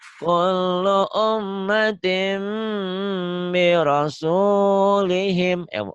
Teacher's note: Kasroh tain atau tanwinnya ketemu ba. Kasroh tainnya, tinnya berubah menjadi bunyi M. Jadi tim. Kullu ummatin birasulihim. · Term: iklab